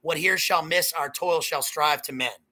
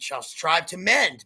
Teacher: trick is to end the line on an up note. Don't end the line on a down note.